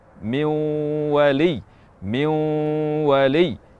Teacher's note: kita idghamkan ke waw, namun masih ada sisa dari sifat nun mati atau tanwin tersebut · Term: idgham tidak sempurna